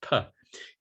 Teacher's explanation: the voiceless bilabial plosive